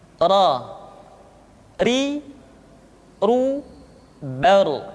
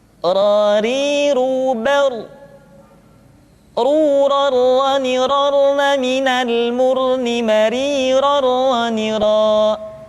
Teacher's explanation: Diucapkan dengan menyentuhkan punggung lidah dengan langit-langit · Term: huruf ra